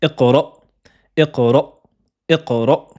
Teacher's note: Et on retrouve le hamza avec sukoun, donc fermez les cordes vocales.